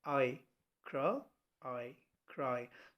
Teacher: It starts with A and it blends into I and ends in I itself.